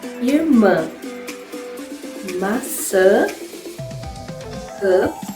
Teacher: So how do you produce the nasal sound? Obviously, aside from using your mouth, you also have to use your nose, hence a nasal sound.